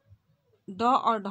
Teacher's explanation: इनका उच्चारण करते समय जीवा ऊपर उठकर झटके के साथ नीचे आती है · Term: उत्क्षिप्त व्यंजन